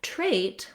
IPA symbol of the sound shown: eɪ